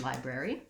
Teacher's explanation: it has 3 syllables and it has first syllable stress. So the lie is long. It's marked in the dictionary with this little line before the stressed syllable.